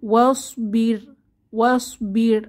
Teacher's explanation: আগের হরফে আমরা জের পাবো তো এখানে প্রথমে আছে ওয়াসবির ওয়াসবির আমরা ওয়াসবির মোটা করে বলবো না ওয়াসবির পাতলা করে রকে পড়বো